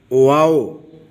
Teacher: دونوں ہونٹوں کے درمیان اس کی آواز آتی ہے